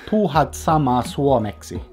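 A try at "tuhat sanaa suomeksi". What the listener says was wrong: Sana. No, you said sama. Sana. Tuhat sana.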